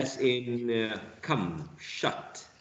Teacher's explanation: The position of the tongue is central. Okay. It is unrounded. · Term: wedge